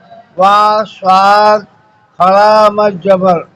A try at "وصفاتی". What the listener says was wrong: نہیں، کھڑا مت زبر تو بعد میں سواد پہ خود آ رہے ہیں، دیکھا جائے گا واؤ پر کیا ہے، واؤ پہ صرف زبر ہے، واؤ سواد زبر وس، اب آگے سواد سواد فا کھڑا مت زبر،